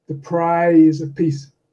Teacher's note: exaggerating the vowel clipping so for example the prize of peace exaggerating the length of prize and exaggerating the shortness of peace